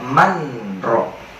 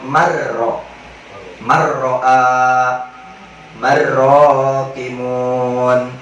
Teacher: nun matinya itu di khol atau dikosongin, langsung masuk kepada huruf ro-nya, marro. Jangan dibaca manro, tapi dibacanya manro, tapi dibacanya marro. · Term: idgham bila gunnah